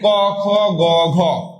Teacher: ক, খ, গ, ঘ কোন জায়গায় বাধা পাচ্ছে না, একদম কণ্ঠ নালী থেকে আসছে। এর জন্য এটাকে বলা হচ্ছে কণ্ঠবর্ণ।